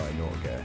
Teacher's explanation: Instead, it gracefully ushers in the final vowel, creating a smooth and harmonious flow. The final E in Norge is pronounced similarly to the E in bed or red. It's a short, crisp vowel that adds a touch of brightness to the word. · Remember the gentle scrape of the R, the whispered G, and the crisp E.